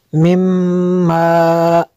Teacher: میم شدد ہے، یہاں پہ غنہ کرنا ہے۔